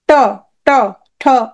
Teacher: মূর্ধা মাঝখানে লাগে দেখো ট, ট, ঠ।